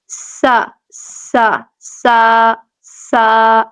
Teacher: سا، سین بھی سا اور صاد بھی سوا، لیکن سا کو نرمی سے ادا کریں گے، سین میں سیٹی آئے گی لیکن باریک پڑھا جائے گا